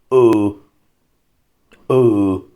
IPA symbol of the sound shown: u: